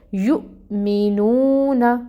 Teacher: اب ہم جب اس کو پڑھیں گے تو یو پہ جھٹکا دیں گے